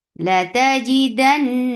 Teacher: Noon will get sifa of gunna. This gunna is akmal, so keep the sound in your nose for a longer time.